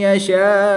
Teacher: یہاں پر الف مدہ کے بعد حمزہ اسی کلمے میں ہونے کی وجہ سے مد منفصل نہیں بلکہ مد متصل ہوگی، یہاں پر 3 سے 5 الف تک کھینچ کر پڑھیں گے